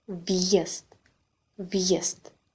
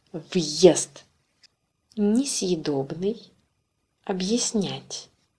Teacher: Hard sign also indicates the presence of Y before a vowel.